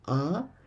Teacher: horizontal line is below the letter it's indicating intonation so here we have a double sound ah and the sound is going low